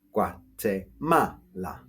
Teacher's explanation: We stress that on the second a